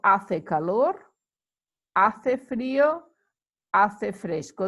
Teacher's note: remember um the h is not pronounced